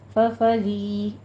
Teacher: فریقا میں ری میں یا مدہ ہے، را باریک پڑی جائے گی، ری نہیں کہنا ہے.